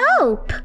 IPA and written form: əʊp (ope)